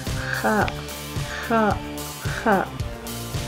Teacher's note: It is not found in English and its place of articulation is made by the upper throat. Please try to pronounce it kha, kha, kha.